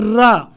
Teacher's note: रा का उच्चारण स्थान भी मूर्धा होता है।